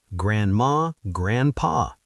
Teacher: And grandma and grandpa, in fast speech, those Ds often disappear.